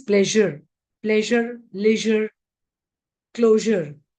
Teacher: Normally, Indian speakers replace it by sh in the south, and here it is z. Actually, it is a combination of sh and z. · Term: the sound in pleasure